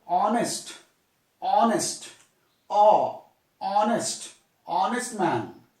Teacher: H is silent. So honest, honest man. O sound is a vowel sound.